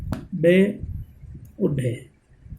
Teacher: उत्क्षिप्त, जिन ध्वनियों को उच्चारण करते समय जीवा की नोक तालु को स्पर्श करके श्वास को रोक देती है तो झटके के साथ अपने स्थान पर वापिस आकर मुख द्वार को खोल देती है, वो उत्क्षिप्त ध्वनि कहलाते हैं।